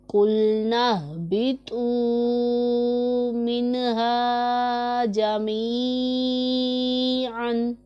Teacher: یہ والا ہا حلق کے نیچے والے حصے سے ادا ہوتا ہے